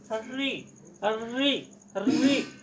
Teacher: आगे की जो जिह्वा है वो अक्षरों को फेंकने में या बोलने में क्या है कि कंपन करते हुए बाहर निकलती है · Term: मूर्ता